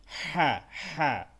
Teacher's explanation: এই হাটা গলার মধ্যভাগ থেকে উচ্চারণ হয়, একটু ভিতর থেকে আনার চেষ্টা করতে হবে।